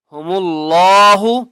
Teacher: اللہ کا نام موٹا کر کے پڑھیں گے کیونکہ اس سے پہلے میم کے اوپر پیش ہے